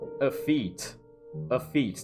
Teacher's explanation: The emphasis is on the second syllable.